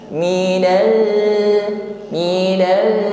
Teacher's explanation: huruf lam sukun, tampak sifatnya yaitu tawassud, suara tidak boleh putus.